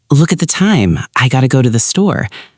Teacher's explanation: The flapped T in gotta was excellent.